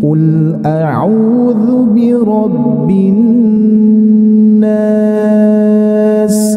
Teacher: Nada yang pertama naik · setiap menemukan nun bertasdid harus kita dengungkan ya. Jadi harus ditahan dulu, jangan sampai tergesa-gesa.